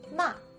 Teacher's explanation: the fourth tone goes straight down like an exclamation mark